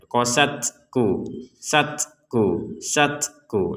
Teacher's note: kemudian ada nafas keluar letupan sedikit saja · kita ucapkan qasat, kemudian ada nafas keluarnya. Nah, sempurnanya itu ketika ada nafas keluar. Qasat. Tapi jangan kelebihan nafas juga, nanti qasat.